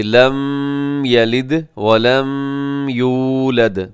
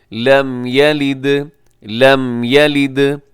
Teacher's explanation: ایک تو لوگ میم کے اوپر تھوڑا آواز کو ناک میں لے جاتے ہیں